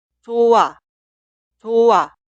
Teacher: Cuidado con la consonante inicial i응. La consonante final 히읗 delante de la consonante inicial i응 simplemente no se pronuncia.